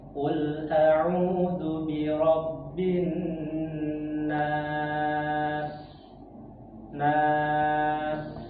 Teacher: Jadi ee Bapak ada ini yang perlu diperkuat lagi yaitu ee sifat saofir pada huruf sin ya. Huruf sin itu alirkan aja Pak suara ya